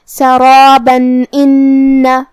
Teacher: ہم یہ آیت کو اگلی آیت کے ساتھ ملا کے پڑھے تو جو کہ کلمت ان میں الف ہے اور الف حروف الاظہار میں سے ہے، اور اظہار کا معنی ہے ظاہر کرنا، اور تنوین کی اصلیت نون ساکن ہوتی ہے، تو ہم یہاں تنوین کو ظاہر کریں گے اور اسے نون ساکن پڑھیں گے اور بغیر غنہ سے حکم کو ادا کریں گے